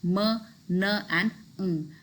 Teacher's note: somewhere vocal tract is closed and air is escaping through the nose and that's why these sounds fall into the category of nasal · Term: nasals